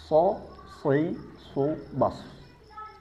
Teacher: ada suara berdesis karena mengalir pada ruang yang sempit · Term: safir